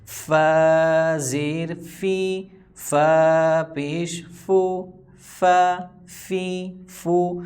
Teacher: فا اوپر والا جو جبڑا ہے دانتوں کا اس کو نیچے والے ہونٹ پر رکھیں گے تو فا ادا ہوگا۔